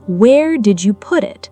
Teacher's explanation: Heavy stress on put, the actual content being questioned, while where and [music] did remain comparatively light.